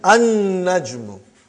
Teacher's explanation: You did not pronounce lam because noon is a shamsi, sun letter.